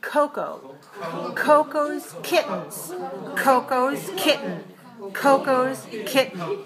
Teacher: has a stress puff of air on the first syllable but not on the second